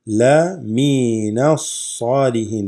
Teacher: alif lam drops and you go straight into the sad. If you recall from the last lesson, and I believe the before as well, we said that those are huruf shamsiyya.